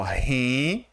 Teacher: a palavra rentável tem a sua sílaba tônica aqui no tá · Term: paroxítona